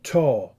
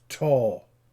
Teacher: realized as an aspirated voiceless alveolar stop notice that there is a superscript h symbol right so it's